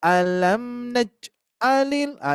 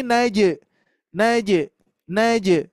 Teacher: kalau huruf Jim huruf Jim ketika sukun itu mantul bu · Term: Qalqalah